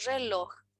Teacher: la palabra es aguda porque se pronuncia en la última sílaba